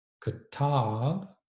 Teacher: a schwa vowel followed by a long A